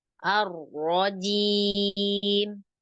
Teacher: kurangi sedikit getarnya tapi jangan sampai hilang